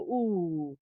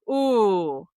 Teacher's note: that's a back of the mouth sound, so the tongue is kind of gesturing towards the back of the mouth, and it's also, stimulating muscles that are the sort of opposite of smiling muscles. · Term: back vowel